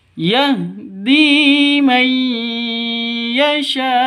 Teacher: nun mati atau nun sukun bertemu dengan ya. Cara bacanya masuk ke ya, masuk ke ya disertai dengung dua ketukan karena bacaan idgham bi gunnah.